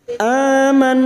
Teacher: nun yang bertasdid gunna musyaddadah kita dengungkan selama 3 harakat